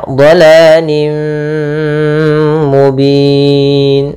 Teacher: tanwinnya masuk ke mim, tapi masih menyisakan suara n-nya sedikit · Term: idgham bi gunnah